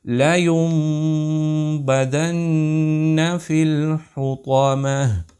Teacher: ہم میم کی آواز کو ناک میں لے گئے، اور جب ہم نے با کا تلفظ کیا تو اس میم کی آواز کو اس با میں چھپا دیا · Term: اقلاب